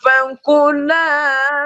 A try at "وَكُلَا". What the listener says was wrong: واکولا واو ہے. اچھا یہاں واکولا ہے. پھر پڑھیے واکولا.